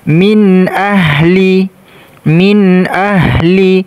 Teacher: Kemudian di sini nun sukun ketemu huruf alif dibaca izhar, dibaca jelas.